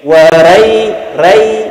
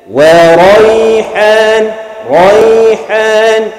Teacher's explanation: Ra tu masih mengekalkan dia punya fathah yang berat tu. Ra tebal bunyi dia, eh?